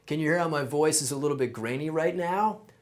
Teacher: Can you hear how my voice is a little bit grainy right now? That's vocal fry, and you can hear it all over California.